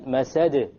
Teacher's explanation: there's a slight more emphasis on the masad because it's at the end of a word